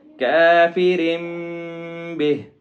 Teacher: اول کافر به، را کے نیچے زیر ہے جس کی وجہ سے اس کو باریک پڑھیں گے، اور آگے با ہے تو یہاں پہ اخفا ہوگا